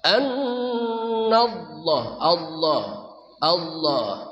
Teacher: Allahnya lebih tebal lagi pak Allah lebih berasa lagi